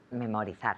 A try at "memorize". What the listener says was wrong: Good, so really similar, except the pronunciation of the Z. Memorize. Memorize. So it's like a Z sound. Memorize.